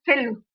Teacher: फा थोड़ा रगड़ के आवाज निकल रही है, हवा निकल रही है मुंह से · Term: ऊष्म व्यंजन